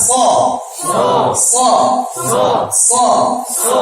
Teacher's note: Teknik huruf so, pengucapan huruf so sambil senyum, tidak monyong